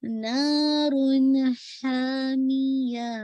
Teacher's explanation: آپ نے ہا کو مڈل آف تھروٹ سے ادا کرنا ہے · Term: وسط الحلق سے